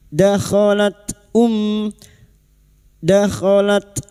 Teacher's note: Huruf ta yang memiliki sifat hames dan syiddah. Dakhalat um dakhalat ummatul mim yang bertasdid gunna musyadah kita denggungkan selama tiga harakat.